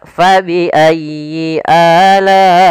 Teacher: Panjangnya adalah 4 harokat atau 5 harokat. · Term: mad wajib muttasil